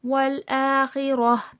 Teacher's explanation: والآخرہ، ہائے مدورہ کہلاتا ہے، تا کی آواز کو ہا کی آواز کے ساتھ بدل دینا وقف میں